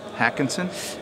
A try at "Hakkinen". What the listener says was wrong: Actually, that's a misprint. It's okay. Mika Hakkinen, so there's no S.